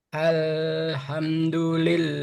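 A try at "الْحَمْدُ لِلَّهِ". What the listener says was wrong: Nah, masih buru-buru. Hamdu.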